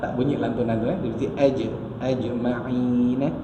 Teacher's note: Kemudian di situ pun ada satu saja huruf qalqalah, iaitu huruf jim lah yang kita lantunkan. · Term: qalqalah sughra